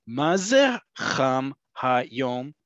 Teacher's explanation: I'm doing all these really sharp up and downs with the tone and intonation to overemphasize, overdramatize the situation.